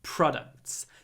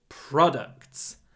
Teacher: The stress is on the first syllable, not like продукты in Russian.